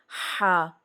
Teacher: ہا کے ساؤنڈ میں واضح فرق ہو، یہ ہا وسط حلق سے نکلے گا ہا، اور حمزہ والا اکثر پڑھتے ہیں لوگ، حمزہ کے ساتھ جو ہا ہے نا وہ والی آواز ہوتی ہے اکثر لوگوں کی۔